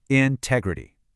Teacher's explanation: integrity uses that short, relaxed I sound